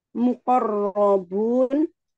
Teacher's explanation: Rya dibaca tafhim karena berharakat fathah